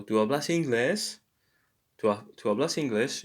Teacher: in Spanish, questions or just the intonation we just change at the end. So there is a rise of the intonation at the end.